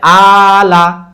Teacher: খালা জবর হলো আলিফ মাদের মতো, যেটা 2 হারাকাত টান হবে। যেমন প্রথম শব্দটা আলিফ খালা জবর আ, টান দিলাম, লাম জবর লা, তাহলে আলা।